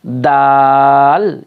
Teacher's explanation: اس کو زیادہ کھینچنا ہے تھوڑا، اس کے اوپر مد ہے